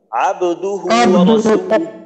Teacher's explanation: عبده و যেন একটু লম্বা না হয়